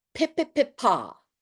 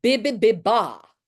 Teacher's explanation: We've got the sounds that are plosive, like the sound of P and the sound of B, and they're distinct. One is voiced and one is not. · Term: plosives